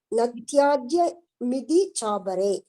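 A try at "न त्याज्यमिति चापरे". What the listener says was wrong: நத்யாஜ்யம் இதி சாப்பரே. நீங்க பிரிச்சு படிக்கும்போது மிதி சொல்ல வேண்டாம், இதி சாப்பரே.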